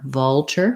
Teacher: Vulture, we have the ul, very dark L here, bit of a schwa before it, vul, and then this tu says chur, the ch sound, with an er, vulture, first syllable stress.